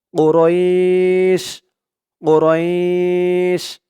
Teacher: উচ্চারণটা এমন হবে না উরাইশিন এমন হবে না এখানে অকফা আছে থামার কারণে ওরাইশ রই বলে এক আলিফ টান দিয়ে শিনকে ধরবে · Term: মধ্যে লিন